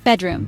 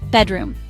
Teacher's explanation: 2 syllables. Stress is on first syllable.